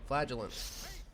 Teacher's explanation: Just emphasize the gel and you're good.